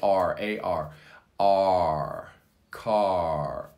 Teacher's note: the throat is open the mouth is slightly open and it comes from the very back of the throat · you pronounce that in the back of your throat, R. So let's just say it's the ah, it's in the very back, R. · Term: AR sound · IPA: /ɑ:/